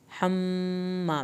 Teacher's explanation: मीम की शत पे अलिफ के बराबर देर लगाएं